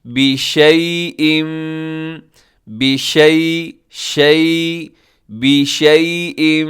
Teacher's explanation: یا ساکن سے پہلے زبر ہو یا لین ہوتی ہے. اسے مجہول نہ پڑھیے گا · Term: یائے لین